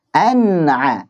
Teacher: Antum lihat an di ujung lidah, a di tengah tenggorokan. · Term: izhar